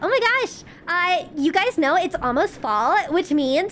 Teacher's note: the valley girl is the easiest to do cuz it's just a vocal fry